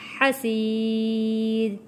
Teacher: را کو ہم نے موٹا نہیں پڑھنا یہاں پہ، کیونکہ را سے پہلے زیر آ رہا ہے